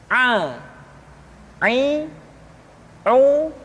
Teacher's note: Selanjutnya pengucapan huruf A dikeluarkan dari tengah-tengah tenggorokan seperti kita mengucapkan huruf H. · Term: huruf Ain